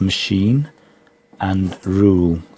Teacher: as machine and Rule and these words are much stronger so these words are much stronger because there's a high vowel sound